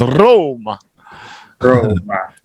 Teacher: You really roll the R's.